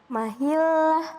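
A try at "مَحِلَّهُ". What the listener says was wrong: Tuh kan melet, mahillah. Mahillah, dalam mahil. Nah, kalau melet huruf sa melet dari ya, keluar. Jangan melet.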